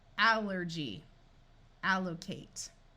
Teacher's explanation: here are some words where we use a short a sound for a word beginning with a l l rather than awah